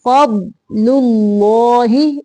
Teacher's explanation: پہلا لام باریک دوسرا لام موٹا پڑھیں گے